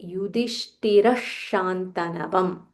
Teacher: when there is a visarga followed by sh, we join together and say Yudhishtira Shantanavam